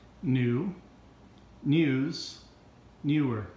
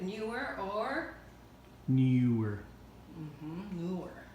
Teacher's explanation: you can either say the oo or a u depending on your accent, wherever is your region, where you came from.